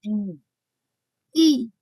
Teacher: উচ্চারণ করো, যারা উচ্চারণ করো দেখবা যে জিভের মাঝখানটা একদম তালুতে গিয়ে লাগে। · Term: উচ্চ স্বরধ্বনি